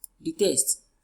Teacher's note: since it has two syllables, the last part carries the stress